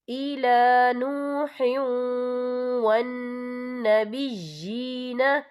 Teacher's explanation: کما اوحینا الی نوح والنبیین، یا دیکھیں الی نوح، ہا کے نیچے تنوین ہے، تنوین کے بعد جو ہے واو آ رہا ہے، اور واو جو ہے حروف یرملون میں سے ہے، تو یہاں پر ادغام ہوگا، تو ہم اسے تھوڑا سا غنّے کے ساتھ پڑھیں گے